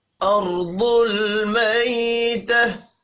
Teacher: दौद हुरूफ मुस्तालिया है, दौद भी पुर पढ़ा जाएगा